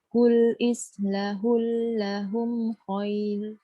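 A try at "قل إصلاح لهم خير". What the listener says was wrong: Qul isla panjang lam alif.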